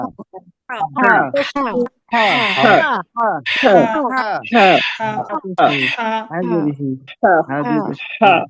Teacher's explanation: লম্বা হা উচ্চারণে হলকের মাঝখান থেকে গলায় শ শ করে শব্দ হবে